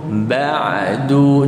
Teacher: Ain betul-betul jangan termasuk ke hidung.